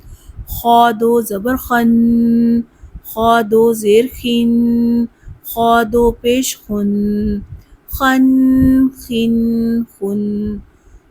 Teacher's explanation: خا ادنے حلق سے ادا ہوتا ہے اور پر حروف میں سے ہے